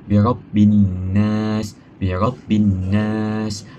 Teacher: Bila kita baca alif lam syamsiah ini, kita tak dengar bunyi lam itu, birabbin nas, padahal sepatutnya yang sebenarnya ialah an-nas, tapi kita tak dengar bunyi lam di situ.